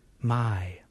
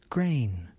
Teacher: The first syllable has the I vowel sound, my, and the second syllable has the A vowel sound, grain. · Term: two vowel sounds